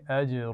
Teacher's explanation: اجرن کے جیم پر قلقلہ ہے